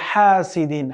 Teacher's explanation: হাটা এখানে সফট হা, কোনোভাবেই কিন্তু হাসিদিন বলা যাবে না, বলতে হবে হাসিদিন। হাটা খুব সফট হবে, একটু বাতাস বের হবে কণ্ঠনালী থেকে।